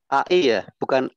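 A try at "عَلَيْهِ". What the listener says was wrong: Ya ke i, buka e, nah ya, bukan ke e tapi i ya. Jadi jelas. Alaihissallah. Alai ya. Itu diperhatikan. Yang pertama berarti mad 2 harokat sudah aman, konsisten, pertahankan. Nah yang pertama kesalahannya di lin. Maksudnya diperjelas i-nya. Terus yang kedua kol-kolahnya diringankan kembali.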